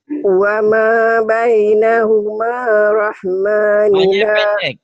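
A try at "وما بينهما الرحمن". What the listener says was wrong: wa ma bainahumar jadi pendek karena ketemu alif lam samsiah. Jadi yang oranye ini yang seperti ini tak dibaca, walaupun ada tak dibaca.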